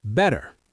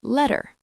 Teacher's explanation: The T becomes soft like a D sound. This is called the flap t.